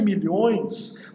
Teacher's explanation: E é um ditongo nasal, que produz, inclusive, essa queda na tonalidade da pronúncia.